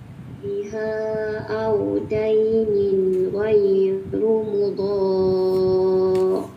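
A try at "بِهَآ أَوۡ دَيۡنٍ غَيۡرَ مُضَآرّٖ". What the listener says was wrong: Ghaira, bukan ghairu. Ghaira mudhar. Zal, biha 4 harakat.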